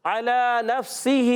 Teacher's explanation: عین کی ادائیگی حلق کے درمیان والے حصے سے